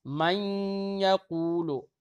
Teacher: اب ادغام ہوگا. اب ادغام کیسے ہوگا؟ مشدد پڑھ دیا جائے گا، اسی لیے تشدید لگا دی جاتی ہے قرآن پاک میں.